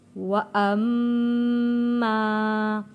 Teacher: وَأَمَّا یہاں پہ واو میں ہونٹوں کو گول کرنا ہے، وا، اور میم کے اوپر تشدید ہے، یہاں پہ غنہ ادا کرنا ہے۔